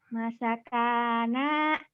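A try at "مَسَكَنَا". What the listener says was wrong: Maknya kan panjang. Masakana. Masakana.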